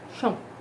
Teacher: Esse O é uma semivogal porque é tão fraco que eu chego a pronunciar chão. Eu vou engolindo então o finalzinho da palavra.